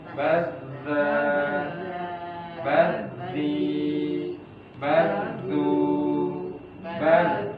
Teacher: huruf zal dengan menyentuhkan ujung lidah pada ujung gigi seri depan bagian atas.